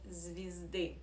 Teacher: in the first syllable we pronounce as e because it is unstressed. So the second law, as I call it, of Russian reduction means that here in unstressed position you must pronounce as e.